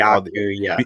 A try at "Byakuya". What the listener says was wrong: Byakuya and all these Byakuya, But there's a B there.